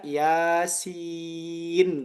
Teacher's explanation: Ada nun sakinah yang tidak tertulis tapi terucap.